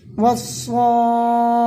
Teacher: حرف مد کے بعد والے حرف پر تشدید ہے اس لیے مد لازم ہوگا. مد لازم کو 3 یا 4 الف کے برابر کھینچ کر کے پڑھیں گے